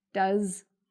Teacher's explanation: notice, again, the s sounds more like a z